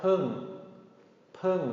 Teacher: This is going to be a short falling tone.